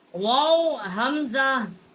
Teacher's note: واو حمزہ، واو جو ہے ہونٹوں کے ناتمام ملنے سے ادا ہوتا ہے، اور حمزہ جو ہے یہ حروف حلقی ہے، اقصائے حلق جو ہے وہاں سے اس کا مخرج ہے